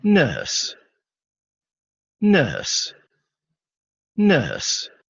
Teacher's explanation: De hecho, incluso ni siquiera se escucha esa R. Esa R no aparece ahí.